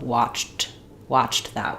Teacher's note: Same as we were talking about with watched that, where I can do the T or I can have an unreleased T and it sounds very muted